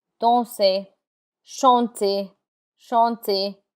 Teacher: the R is not pronounced in words that end in ER.